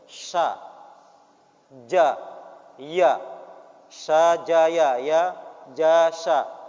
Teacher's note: Tiga huruf yang keluar dari tengah lidah.